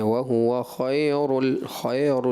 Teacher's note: وہو خیر کا جو لین ہے وہ مجہول کی طرف گیا